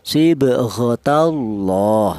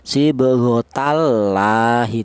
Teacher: Tafkhim itu artinya tebal, yaitu cara bacanya lafal Allah itu dibaca tebal